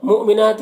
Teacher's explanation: نون میں کھڑا زبر ایک الف کے برابر کھینچ کر پڑھیں گے